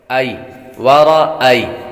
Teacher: ای کو لمبا نہیں کریں گے کیونکہ یا حروف لین ہے اور حروف لین کو لمبا نہیں کرتے۔